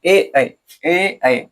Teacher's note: अब देखिए ए ऐ, आपका जीव जो है वो कंठ, कंठ का तो प्रयोग इसमें हो ही रहा है, और उसके साथ साथ तालु में भी इसको, तालु में भी इसे लगाया जा रहा है। जैसे ए बोल के देखिएगा तो आपका जीभ जो है तालु में भी सटेगा